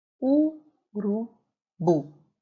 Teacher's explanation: A sílaba mais forte é a última, mas ela não possui acento. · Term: sílaba tônica